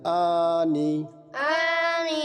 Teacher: নাকের ভিতরে নিয়ে যাবে না আনি আনি ভিতর থেকে বলতে হবে আনি আনি উনি উনি হ্যাঁ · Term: হামজা